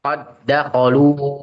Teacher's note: maka dalnya itu langsung masuk ke huruf dal selanjutnya, bukan qad dakhalu tapi langsung qad dakhalu atau diidghamkan.